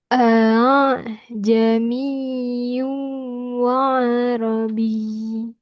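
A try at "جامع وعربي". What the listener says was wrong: Masih kurang yu-nya.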